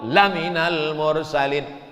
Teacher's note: La di situ artinya sungguh, makanya la-nya pendek